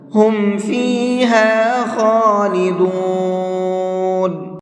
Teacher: خا کو منہ بھر کے پڑھیں گے